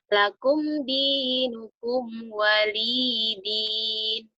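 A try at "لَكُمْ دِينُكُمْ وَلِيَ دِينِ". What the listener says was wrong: Kan ianya ada barisnya. Kalau walidin ini sukun di sininya.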